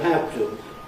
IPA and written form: ˋhæv tə (have to)